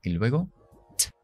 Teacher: Justo detrás de los dientes, arriba pegado, en esa zona del paladar dura que hay, y es t, t. Se llama consonante oclusiva. Eso quiere decir que hay una explosión. Detengo el aire y luego t, sale. T. Mucho más que en castellano, la T, t, t. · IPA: /teibəl/